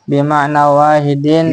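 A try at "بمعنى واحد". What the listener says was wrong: Bimaknan wahidin harokatin. Bukan bimakna wahidin, makna dimudhafkan ke wahid, bukan. Bimaknan itu satu makna, wahidin yang sama, yang satu. Itu diingat-ingat, bimaknan wahidin. Lupa itu kan bimaknan, Pak. Ya kan isim maksur. Ya bimaknan ini dibaca jet.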